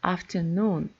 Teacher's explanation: So noon is the main stress and afternoon the secondary stress after.